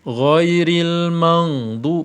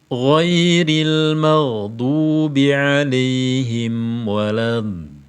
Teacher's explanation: Ghin sukun jangan terkesan membaca eng.